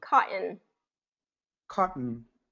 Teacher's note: you're getting that glottal stop in there so T has to be silent there yeah so it's more